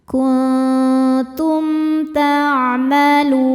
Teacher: Ma kuntum ada hukum izhar syafawi karena mim sukun tidak menghadapi mim atau ba, maka mim sukun dibaca jelas.